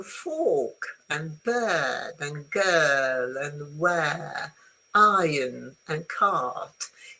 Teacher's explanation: if you make it nice and long, then you can skip the R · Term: standard British English